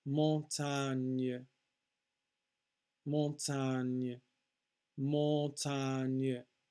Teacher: You really don't say the N because it's part of, the first N is part of a mon nasal vowel sound. Montagne, ny, ny.